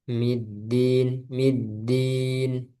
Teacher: Terus dal yang terakhir tuh udah mendekati nggak ada udara ya.